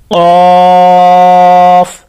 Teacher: یہ قاف زبان کی جڑ تالو کا نرم حصہ ہے یعنی جسے کوا کہا جاتا ہے، وہ نرم گوشت جہاں پر ہوتا ہے وہاں پر زبان کی جڑ کو لگائیں گے تو یہ ادا ہو جائے گا.